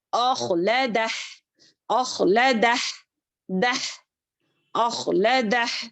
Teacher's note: خا کو موٹا پڑیں گے. یہاں پر دیکھیں اخلدہ، اخلدہ، دہ، اخلدہ.